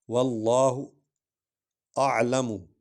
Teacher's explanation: عین کو حلق سے ادا کریں گے۔